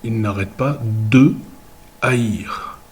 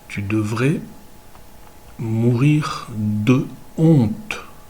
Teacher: Contrairement au français, où beaucoup de mots commençant par H ne vont pas être liés et il y aura un hiatus entre l'article et le mot. Par exemple, sur le verbe haïr, on va dire il n'arrête pas de haïr.